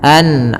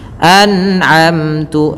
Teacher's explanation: ketika ada nun mati, kita lihat bertemu dengan huruf ain, maka dibaca dengan jelas suara nunnya dan kita baca dengan bacaan namanya izhar halqi.